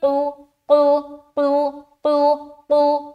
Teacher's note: آگے آنے والا حرف جو قاف ہے یہ موٹے پڑھے جانے والے حرف میں سے ایک ہے, تو اسے ہم موٹا ادا کریں گے